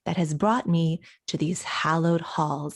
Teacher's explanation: he's stressing a lot more words than we usually stress but this is because he's starting off slow and impactful stressing almost everything